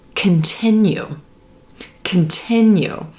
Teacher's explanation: that first syllable is going to be very very quick it's reduced